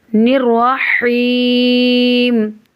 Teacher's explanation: یائے مدہ بن رہی ہے تو کھینچ کر پڑھیں گے